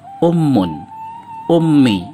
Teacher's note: gabungan dari dua bunyi vokal a dengan varian u dan bunyi bilabial nasal